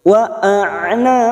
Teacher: Karena kita membaca waqaf maka huruf ba kita pantulkan qalqalah kubra